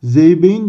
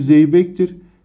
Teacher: K sesi yumuşak G'ye dönüşmüş, yumuşamış.